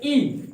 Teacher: और तालव्य स्वर किसे कहते हैं, तालु, मुंह के भीतर की छत का जो पिछला भाग होता है, मुंह के भीतर की छत का जो पिछला भाग होता है, जैसे ई बोलते हो तो आवाज कहां पे टच करती है, डायरेक्ट पिछले मुंह के भीतर की छत के पिछले भाग पे, तो वहां से ई निकलता है